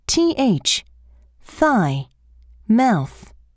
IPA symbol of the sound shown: θ